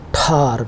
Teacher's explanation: the t sound in the word tar is normally pronounced with a stronger puff of air. یہ ٹھار جو ہے اس میں ہوا کا ایک ساؤنڈ پیدا ہوتا ہے. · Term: aspiration